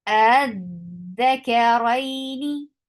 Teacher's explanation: اس میں قطعاً کوئی مد داخل نہیں ہوگا. مد یعنی you will not stretch the sound of this حمزہ.